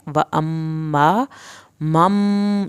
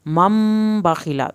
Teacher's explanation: یہاں پر ادغام ہوگا یعنی ملایا جائے گا میم یہاں پر اس میم کے ساتھ، مم باخیلہ، اس ملانے کو ادغام بولتے ہیں.